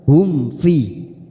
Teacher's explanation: mim sukun bertemu FA izhar syafawi izhar syafawi kita baca jelas tanpa mendengung